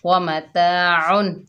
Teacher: तनवीन को हमने ज़ाहिर करके पढ़ा, गुन्ना नहीं किया। हमज़ा के नीचे ज़ेर है, बगैर खींचे पढ़ेंगे। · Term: इजहार हलकी